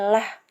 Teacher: Membaca huruf lam dengan bunyi tipis atau ringan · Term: lam tarkik